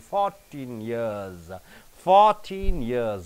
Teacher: Suppose if it ends with 14, you are stressing on teen. But after teen, you have years, then you are stressing on 4, not teen.